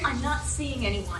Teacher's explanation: En las palabras seeing y también anyone, queremos subir en la primera sílaba